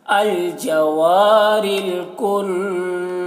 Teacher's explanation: نون مشدد ہے تو غنہ ہوگا